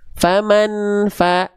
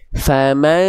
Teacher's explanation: cara melafalkan ikhfa hakiki adalah disamarkan bunyi n-nya lalu dimasukkan ke dalam hidung karena dia dengung ya